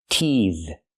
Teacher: teeth is a verb and the th makes the voice sound